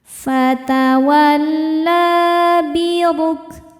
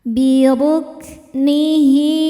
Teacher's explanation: Huruf ra dibaca tafkhim karena barisnya dhammah. Cara bacanya ditebalkan.